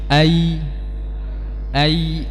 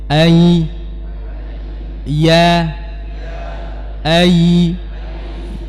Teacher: huruf ya dia hampir sama dengan huruf syin sama-sama tidak rapat akan tapi bedanya dia tidak ada sifat tafasyinya kemudian juga disertai dengan menurunnya rahang sedikit